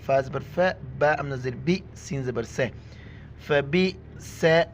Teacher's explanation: حمزہ کے اوپر جھٹکے کے ساتھ پڑھیں گے